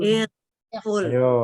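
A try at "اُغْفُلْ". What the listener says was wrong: I apa U? Nah, kalau U ikut U juga. Kalau hanya U ikut U.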